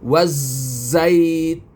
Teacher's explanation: Yang penghabisan ni tun ini adalah saya baca empat harakat iaitu mad arid lukun